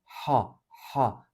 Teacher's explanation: ha boğaza baskı yaparak Boğazı sıkarak çıkartılır